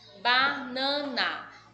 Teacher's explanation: Neste caso, o nan é a mais forte. Também é a segunda, ó. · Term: sílaba mais forte